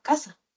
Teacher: El que habla hispanoamericano va a decir casa, así sea casa o caza. Lo va a decir igual. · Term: ceseo